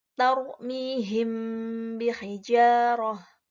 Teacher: Huruf ikhfa syafawi hanya satu, yaitu ba. Cara membaca ikhfa syafawi dengan suara yang samar antara mim dan ba pada bibir. Kemudian ditahan kira-kira 2 harokat atau 2 ketukan, seraya mengeluarkan suara ikhfa dari pangkal hidung.